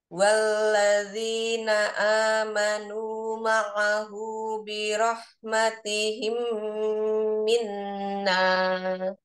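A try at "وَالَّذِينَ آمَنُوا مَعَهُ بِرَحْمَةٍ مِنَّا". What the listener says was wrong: Gak ada ha, matim minna.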